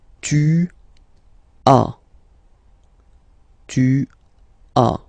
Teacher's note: As usual in French, final S is not pronounced.